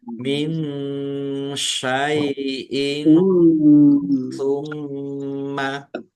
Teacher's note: Nun sukun bertemu dengan huruf shin, bacaan ikhfa dibaca samar-samar.